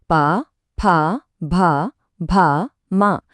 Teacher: இது நம்ம ரெண்டு உதடுகளும் ஒற்றதால மட்டுமே பிறக்கக்கூடிய ஒளிகள். தொண்டையில் ஆரம்பிச்சு உதடுகள்ல முடியறந்த வரிசை இருக்கே. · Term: பா வரிசை